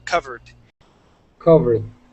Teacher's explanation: when a base word ends with an R, like cover, okay, that ed sounds like a D.